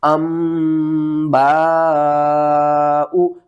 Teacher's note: तनवीन के बाद अगला हर्फ अगर बा आ जाए तो हम नून की आवाज़ को मीम की आवाज़ में बदल देते हैं, यानी कि ये नून ख़त्म हो जाएगी, हम हमज़ा को मीम के साथ मिलाकर पढ़ेंगे।